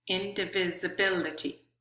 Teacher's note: there's a little bit of stress on in there's the most stress on bit and there's a third level of stress on vit but the